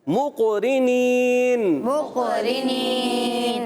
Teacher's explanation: وما كنا له وما كنا له وما كنا له وما كنا له مقرنين، مقرنين قاف میں کلکلا کریں گے، مقرنين، مقرنين۔ یہ قاف موٹا بھی رکھنا ہے، کلکلا بھی کرنا ہے اور اچھے انداز سے ادا بھی کرنا ہے۔